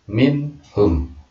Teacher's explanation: ada nun sukun atau nun mati bertemu dengan ha, min hum. Jadi harus izhar atau jelas. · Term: izhar halqi